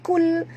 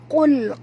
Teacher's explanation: Keluar pangkal lidah. Pangkal tekak. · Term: huruf qaf tebal